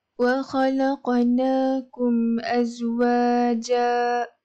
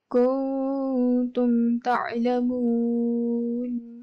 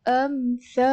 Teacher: bacaan adalah tidak dengung, iaitu dibaca dengan menjelaskan bunyi mim mati. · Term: izhar syafawi